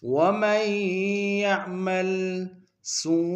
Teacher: سو میں وہ مدہ ہے اور مدہ متصل ہے، کم سے کم 3 مقدار میں کھینچے گے